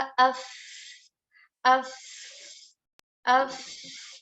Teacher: Ketika kita baca af, banyak udara yang mengalir dan juga suara tidak terlalu besar